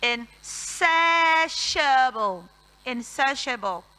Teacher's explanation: but the S makes the sound sh and not s